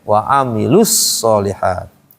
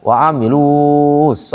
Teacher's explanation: Kalau ada alif lam maka langsung ee masuk ke alif lam. Huruf mad yang sebelumnya ada itu tidak dipakai lagi, tidak dibaca panjang.